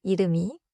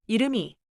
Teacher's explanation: 여기서 이름의 받침은 미음이에요. 미음 소리가 다음 음절 이와 만나서 미처럼 들려요. So I should not say 이름, 이. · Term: 연음